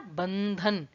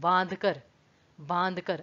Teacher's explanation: हमने न पे बहुत फोकस नहीं डाला, सिर्फ गले से हल्का सा न का स्वर निकाला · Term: अनुनासिक